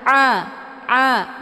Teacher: letak posisinya di tenggorokan bagian tengah jadi bacaannya lunak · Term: Ain